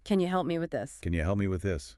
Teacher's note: The vowel sound in can often weakens when it's unstressed, becoming more like kin or ken, and you reduces to ya.